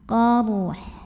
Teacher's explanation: Bila berhenti di sini jangan sampai tidak terbaca. Jadi dorong habis ro, dorong ke tenggorokan tengah ke ha.